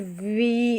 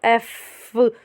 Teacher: you probably notice that वी had a buzz that एफ did not have